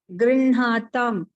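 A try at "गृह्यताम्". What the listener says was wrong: Grunhatam. Now Grunhatam doesn't have yakara. So where did we go wrong? Grunhyatam. See this hakara and akara compound, the pronunciation we can lead off with the akara. So gr, n, h, ya, tam. Okay, grunhyatam or grhnyatam. Grhnyatam, you see, karkasha to pronounce. So the rule of pronunciation for some compounds with hakara is lead off with the later Vyanjana.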